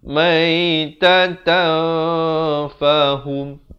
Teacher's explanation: Maitatan, di sini hukum ikhfa hakiki. Asalnya maitatan, tapi bila datang fa disamarkan. Itulah maksudnya ikhfa, disamarkan dengan kadar 2 harakat.